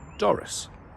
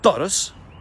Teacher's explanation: But in Gaelic we have a dental D, da, and much more weight at the beginning, much more oomph. And also the vowel is different at the end. It's not an is, it's an us.